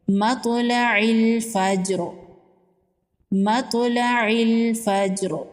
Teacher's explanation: جیم حروف قلقلہ میں سے ہے، جیم پر بھی قلقلہ ہوگا۔ وقف کی صورت میں را کو ساکن کر دیں گے اور ساکن را کو وقف کی صورت میں پر پڑھیں گے۔